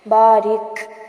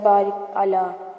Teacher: بارک، یہ ساؤنڈ آتی ہے، تو یہاں پر لے کر آنی ہے. اگر ہم اس کو نہیں نکالتے تو یہ ایسے بن جاتا ہے بارک اعلیٰ، اور آپ دیکھ رہے ہیں کہ ہمیں کاف فیل ہی نہیں ہوتا سننے میں، لہٰذا یہ سانس جاری کرنا لازمی ہوتا ہے